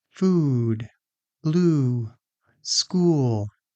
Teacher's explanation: So, for "oo", your tongue is high in your mouth. Your lips are strongly rounded. And the sound is relatively long. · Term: ooh sound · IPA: /u/